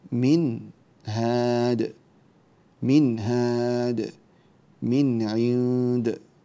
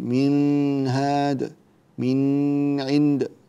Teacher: ننتبه في حالة الإظهار في قوله من هاد أو من عند ألا نطيل الغنة، لا نقول من هاد من عند، ننتبه إلى هذا.